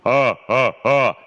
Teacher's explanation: «А», тому що відкрита горлянка, тому що «а», все відкрито, mm-hmm. корінь язика потопає в горлі, під небінням, яке піднято, mm-hmm. як у оперних співаків, «а», і от тоді йде чистий природний тембр. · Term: звук «а»